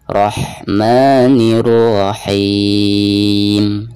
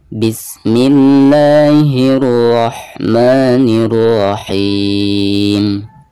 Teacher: Nah, di sini ketika membaca rohnya ditebalkan Rahman, dan ketika membaca ha sukunnya itu harus ada nafas yang mengalir keluar, dan makhraj ha ini keluarnya dari tengah-tengah tenggorokan. Rahmanirrahim, seperti itu.